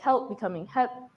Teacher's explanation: a dropped l sound and words like help becoming hep